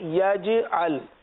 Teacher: یاد رکھیے کہ جیم پر قلقلہ ہوگا، جیم ساکن ہے. یجعل، یجعل نہیں پڑھیں گے، یجعل.